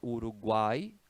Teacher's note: é um tritongo quando se fala Uruguai ali no final é uma sílaba só